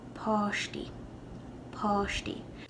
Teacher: the a with an accent mark has an all sound whereas in ulster it'll sound more like ah